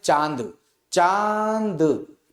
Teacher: चा में भी देखो मुख से वायु निकल रही बाहर और नासिका का प्रयोग साथ में होगा, दोनों का प्रयोग साथ में किया जाएगा। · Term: अनुनासिक